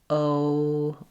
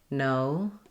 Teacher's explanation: my tongue raises and my lips get less pursed. O, they close a little bit as my tongue raises in English. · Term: diphthong